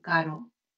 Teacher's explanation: Esta es la R suave, la R entre vocales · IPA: /r/